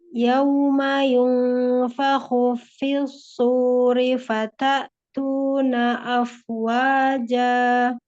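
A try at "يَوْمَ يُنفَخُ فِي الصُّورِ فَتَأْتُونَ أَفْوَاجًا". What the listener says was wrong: Masya Allah.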